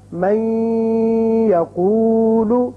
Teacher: ہم اس کو جب من کو یقولو کے ساتھ ملائیں گے تو ادغام کریں گے اور یہاں 1 الف کے برابر آواز ناک کے بانسے میں ٹھہرے گی. تو لفظ بنے گا من یقول.